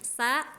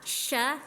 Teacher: Kalau sin itu ujung lidah ke gigi seri bawah yang bawah. Kalau syin itu di tengah-tengah lidah.